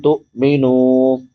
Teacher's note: تو جھٹکا دینا ہے، حمزہ ساکن ہے، تو مینو نہیں پڑھنا. تو مینو، نون کے بعد واو مدہ ہے، واو ساکن ما قبل ضمہ یعنی پیش ہے، تو اس کو 1 الف کے برابر لمبا کریں گے.